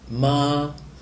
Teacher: so it's a flat, long first tone